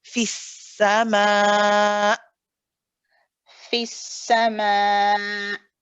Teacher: Because of the shidda quality, we've got to stop it all of a sudden. So you don't want to hear the if you hear that's you saying multiple hamzas.